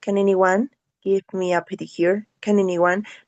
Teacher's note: here we have consonant, vowel, and consonant, and they are going to be related like one word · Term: connected speech